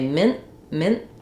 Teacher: the n Sound will be very short and then there's no burst of air for the T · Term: unaspirated